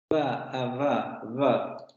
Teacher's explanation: Vemos labiodental, el labio inferior sube a los dientes superiores. Ahí es donde se produce la fricación, esta turbulencia del aire, y sale vibración de cuerdas vocales.